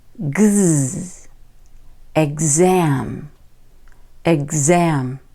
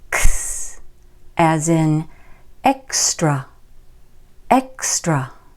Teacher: The voiced X sounds like gz, gz, exam, exam. Now look at the voiceless X. It sounds like ks, ks, as in extra, extra.